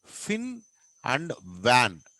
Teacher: this uses the lower lip అండ్ upper teeth